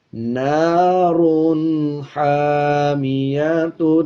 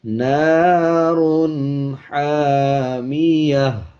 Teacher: اسی طرح زبر کے بعد الف ہے، 1 سیکنڈ لمبا کریں گے، تا کے اوپر 2 پیش ہیں، وقف کرتے ہوئے تا کو ہا بنا دیں گے اور 2 پیش کو سائلنٹ کر دیں گے۔ اب اگر ہم اس پہ وقف نہیں کریں گے تو اس طرح پڑھا جائے گا، نَارٌ حَامِيَةٌ، اور جب وقف کریں گے یعنی آیت کمپلیٹ کریں گے تو پھر پڑھیں گے، نَارٌ حَامِيَةٌ۔